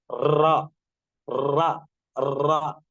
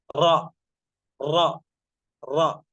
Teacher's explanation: اس حرف کی ادائیگی کے وقت زبان میں لرزہ ہوتا ہے. لرزہ کا مطلب وائبریشن، لرزہ ہوتا ہے، حرکت ہوتی ہے، اور زبان حرف کے مخرج پر بار بار لگتی ہے. جیسے را، را، را. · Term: صفت تقریر